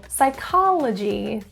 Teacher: stress is in the second syllable